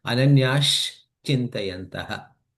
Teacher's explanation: So now there is a sh sound comes in between.